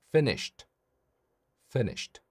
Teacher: 이때 shit이라고 하시면 안 됩니다. 모음 e를 추가하시는 게 아니라 쉬 한 다음에 이 t 소리만 내는 게 포인트예요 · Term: 자음만 발음